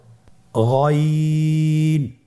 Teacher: গইন হরফটি উচ্চারিত হয় কণ্ঠনালীর শেষ ভাগ হতে।